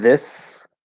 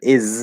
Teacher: in the word this it's an s sound in the word is it's a z sound